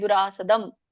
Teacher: ಎರಡು ಮ ಉಚ್ಚಾರಣೆ ತಾನೆ ಅನುಸ್ವಾರ ಕೂಡ ಮ ಉಚ್ಚಾರಣೆ ಆಗುತ್ತೆ